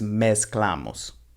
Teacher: zeta has more of an S sound rather than that vibrating Z sound in English